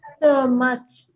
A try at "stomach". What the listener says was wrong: It's not cha. No H. The H is absolutely silent. No H. Stomach. Stomach. No cha. No H. Stomach.